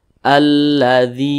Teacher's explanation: Maka huruf dzal ini dia berbaris ke bawah dan posisinya tepat berada di belakang huruf ya, sukun. Maka huruf dzal dipanjangkan, namanya matobi'i, panjangnya 2 harakat atau kira-kira 2 ketukan.